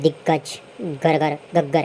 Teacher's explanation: गूंज होती है, नाद होता है, घोष होता है इनको उच्चारण में